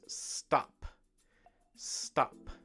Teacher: we don't want that ooh sound at the end we just want the stop